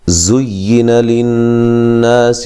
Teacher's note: زا کو سختی سے ادا کریں گے، سیٹی کے ساتھ ادا کریں گے، اور یا کے ساتھ زا کو سختی سے ملائیں گے۔